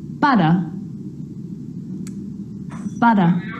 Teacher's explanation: If you think about words like butter, butter, the R at the end of the word is not pronounced.